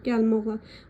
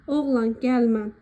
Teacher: inkar şəkilçisi olduqda ma vurğu qəbul etmir